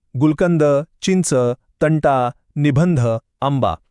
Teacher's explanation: यामध्ये न किंवा म सारखा नाकातून येणारा उच्चार एकदम स्पष्ट ऐकू येतो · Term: अनुस्वार